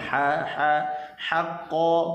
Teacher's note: huruf ha, halqum tengah